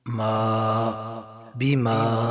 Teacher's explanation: میم کے اوپر مد ہے تو اسے 4 الف کے برابر کھینچنا ہے